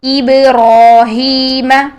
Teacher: ساکن حالت میں اس کی ادائیگی دیکھتے ہیں تو ساکن حالت میں با کو ہم با کی آواز کو ہلا دیتے ہیں. اپنے مخرج پر ٹچ کرنے کے فوراً بعد با کی آواز ہل جاتی ہے